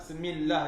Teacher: Dia hanya baca Bismillahirrahmanirrahim, Semillah yang bunyi, Semillah jadinya. Ba tu hilang, sin tu berbaris pula, patut sin mati, jadi Semillah.